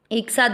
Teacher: 'सा' पर 'अ' मात्रा विसर्ग को 'हा' में बदल देती है